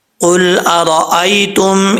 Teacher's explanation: یہاں پہ قاف حروف مستعلیہ میں سے ہے، پر پڑھیں گے، اور آگے جو ہے را کے اوپر زبر ہے، را پر پڑھا جائے گا۔